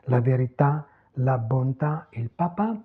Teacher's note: on n'a pas d'allongement vocalique en final accentué. Pas d'allongement vocalic.